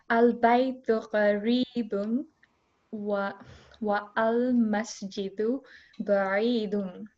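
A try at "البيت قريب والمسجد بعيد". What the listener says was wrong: Excellent work.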